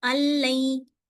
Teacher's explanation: نون اس میں سے بالکل ہٹ جائے گا اور لام سیدھا چلا جائے گا اس کے ساتھ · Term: ادغام بلا غنہ